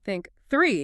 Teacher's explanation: You should just feel air. No buzzing. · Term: voiceless